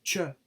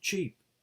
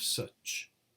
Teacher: fricative audible friction can be heard when the sound is released there are only two affricates in english we can hear the sound cha at the beginning of cheap and at the end of such